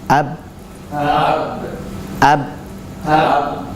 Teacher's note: kita akan mendapati dan merasakan bahwa suara itu berhenti pada kedua bibir. Jadi suara tadi berhenti pada kedua bibir.